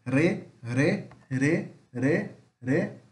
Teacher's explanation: temos o R, que é som de R mesmo, que é vibrante. Alveolar.